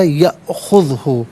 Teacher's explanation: حمزہ جو ہے ساکن ہے تو یہاں جھٹکے کے ساتھ ادا کیا جائے گا